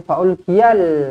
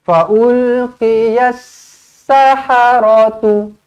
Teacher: Sebab apa? Lamnya bukan lam mati. Ini lam kosong. Selepasnya ada sabdu. Masukkan terus kepada sabdu.